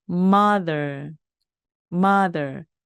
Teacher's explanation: 어머니입니다 인데요이 단어에서가 보이시죠 바로이가 우리가 오늘 을 배운 유성음입니다 자 윗니와 아니 사이에 혀가 살짝 나오고요 그 혀 나온 혀를 목구멍 쪽으로 잡아당기면서 그때 바로 목이 올립니다